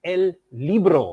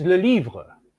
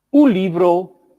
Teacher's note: All these forms start with a lateral consonant L. Then we have an unrounded high front vowel E which in some languages may be lengthened in others it is short.